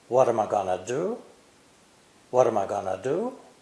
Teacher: What and do are the content words, which are clearly pronounced. The four words am I going to are completely unstressed because they're easy grammar words that everyone knows. What's important to remember is that these five syllables, am I going to, are spoken within the same time limit imposed by the rhythm of the sentence.